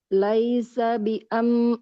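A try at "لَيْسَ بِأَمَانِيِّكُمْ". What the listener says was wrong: tidak biama hamzahnya enggak panjang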